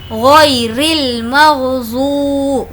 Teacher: واو مدہ، واو جس پر جزم ہے اور اس سے پہلے پیش ہے، اسی لیے اس کو کھینچ کر پڑھیں گے۔